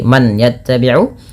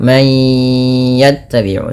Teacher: masukkan bunyi suara nun kepada huruf ya